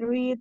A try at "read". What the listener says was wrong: Red, no read, red. No, no, red, en pasado, red.